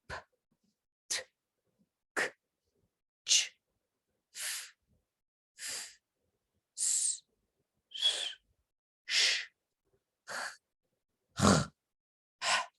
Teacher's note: En todos estos sonidos que acabo de articular, no hubo ninguna vibración de mis cuerdas vocales. Ahora, si yo empiezo a poner una vocal después, parece que vibran p, t, k, ch, pero no.